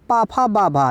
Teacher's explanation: तो ये जो होते हैं ओष्ठ से बोले जाते हैं